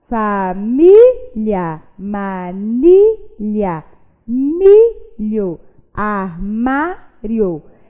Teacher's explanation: Percebam que todas essas palavrinhas têm a penúltima sílaba tônica